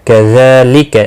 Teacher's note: ذال کے اوپر کھڑی زبر ہے، ایک الف کے برابر کھینچ کر پڑھیں گے، لکا کو کھینچنا نہیں۔